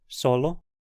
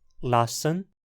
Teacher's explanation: Na pronúncia apical, o s som um pouco mais chiado, pois apenas a ponta da língua tá em contato com a região atrás dos dentes